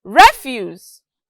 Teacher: notice that there was a rise and then a fall refuse is a disposable waste material and it is a noun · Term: intonation